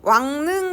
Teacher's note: 리을이 이응이랑 만났지, 그치? 그러면 비음화 일어나요. 리을 대신에 니은이 옵니다.